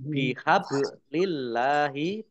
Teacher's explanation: bacaan kolkolah dibaca memantul ditampakkan pantulannya